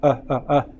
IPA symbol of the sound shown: ə